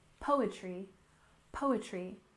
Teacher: poetry slam with stress on the first syllable